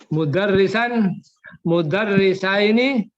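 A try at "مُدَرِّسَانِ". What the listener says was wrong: Mudarrisani. Pak, ni-nya dibaca Pak, karena kita masih pemula. Mudarrisani. Mudarrisani. Yang ropa itu Pak pakai alif dan nun. Ani Pak.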